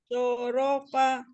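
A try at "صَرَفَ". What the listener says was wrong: So-nya tidak terpisah. Tidak terpisah sorofa, tidak langsung. Sorofa.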